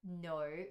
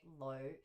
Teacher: a lot of people have kind of been dropping that nasal consonant at the front. So a lot of people will say low and substitute it with like a l, like a L sound. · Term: lazy sounds